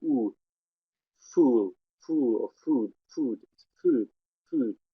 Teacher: Notice oo is quite fronted, like it's not oo as we would expect here.